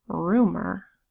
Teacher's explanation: have a word like rumor spelled are you M o are the first syllable of rumor is rue and the you makes a long double O sound